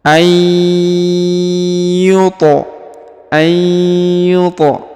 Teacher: huruf to berharokat sukun ya, maka dia dipantulkan atau dikolkolahkan ya, dibaca dengan pantul